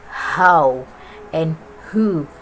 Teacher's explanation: This consonant sound is produced when the flow of air is stopped by the glottis with some contraction of the glottis closing, and then release. Example sound H as in the word how and who. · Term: glottal